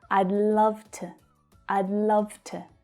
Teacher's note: To is unstressed, so the sound reduces down to the schwa.